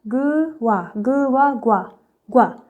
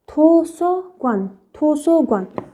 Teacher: क्योक का sound middle में क्या होता है ग